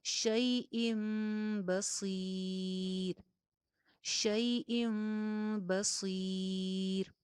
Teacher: حمزہ کے نیچے تنوین ہے اور تنوین کے بعد حرف با آ گیا، جس کی وجہ سے نون کی آواز جو تھی وہ میم میں چینج ہو گئی. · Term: اقلاب, اقلاب کا قاعدہ